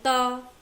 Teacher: त वर्ग दंतमूल, दंत्य मतलब दांत जिसमें लग रहा है बोलने में, ता दांत, जीभ जो है वो दांतों को टच कर रही है